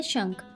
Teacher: शंख में नाक से साउंड निकल रही है तो यहाँ अनुस्वार आएगा